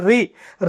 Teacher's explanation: ऋ को जब हम लंबा उच्चारण करते हैं ना तो एक ही ध्वनि नहीं। यहां पर दो ध्वनि सुनाई दे देती है। र और इ